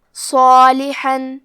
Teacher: حرف الصاد حروف التفخیم میں سے ہے، تو ہم صاد کو بھاری آواز میں پڑھیں گے، کیونکہ اس کے بعد مد الف ہے، تو ہمیں مد الف کو بھی بھاری آواز میں ادا کرنا ہے. · حرف الحا کی ادائیگی حلق کے درمیان والے حصے سے ہے